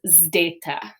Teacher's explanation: So zdeta, and it's that zd sound, right? It's not just a Z sound, it's a zd sound.